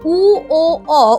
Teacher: উচ্চারণের সময় জিভ পেছনের দিকে পিছিয়ে যায়, কণ্ঠের দিকে, আর ঠোঁটটা গুটিয়ে একটু গোল মতো হয়ে যায়, বর্তুল গোল মতো হয়ে যায়।